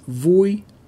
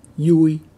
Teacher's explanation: the letter v is pronounced the same as in english in northern dialects but in central and south vietnam it's more often pronounced like a y